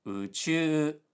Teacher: she said uchu, low high high, which sounds like muchu, meaning deeply immersed in something.